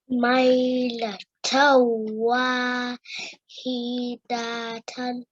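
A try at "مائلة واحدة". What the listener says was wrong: Very nice. Excellent.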